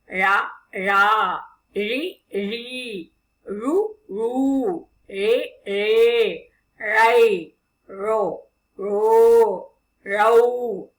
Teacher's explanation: நாக்கு எங்கேயுமே தொடாது, இரு ஓரங்களும் தடித்து நாக்கானது மடிஞ்சு வரும். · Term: ழகரம்